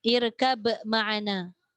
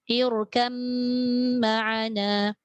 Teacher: Masuk mim sepenuhnya dan gunnah 2 harakat tu mesti. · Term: idgham kamil